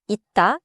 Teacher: before a consonant, or before a pause, 쌍시옷 받침 closes like a 디귿-type stop.